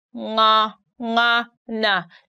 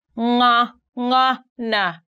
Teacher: you stick your tongue at the back upper part of your mouth and then the voice comes through your nose